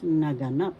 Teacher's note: Naganap. The third syllable has the accent, so pronounce this as naganap.